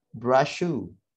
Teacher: Di sini ada double sh ya, double sh. Karena ini serupa, kita langsung hilangkan saja salah satunya menjadi brush shoe.